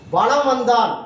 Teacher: வளம் வந்தான் என்பதில் மகர மெய்யெழுத்தை அடுத்து மகரம் எழுத்து வருவதால் மகர மெய்யானது தனக்குரிய அரை மாத்திரை அளவிலிருந்து குறைந்து கால் மாத்திரை அளவாக ஒலிக்கிறது. அதுக்கு தான் மகர குறுக்குன்னு சொல்றாங்க. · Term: மகர குறுக்கம்